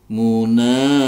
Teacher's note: baca panjang dua harakat Mad Thobi'i